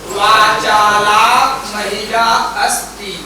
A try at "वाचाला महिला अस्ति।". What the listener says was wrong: आम्, तथा उच्चारणं करणीयं शनैः शनैः।